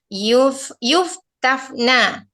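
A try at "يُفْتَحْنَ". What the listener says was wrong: Kenapa menggunakan fa? Haknya mana? Nah, gunakan ha, bukan yuftaf, tapi yuftaf.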